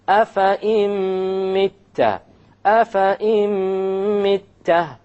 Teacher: we drop the noon and we put the hamza along with the meme, and that is our idgham with ghunna